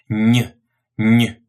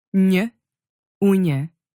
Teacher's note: For this ny consonant, it's the same motion, but the middle of your tongue doesn't just move towards the roof of your mouth, it actually touches it, stopping the airflow and forcing the air to come out of your nose. Ny, ny.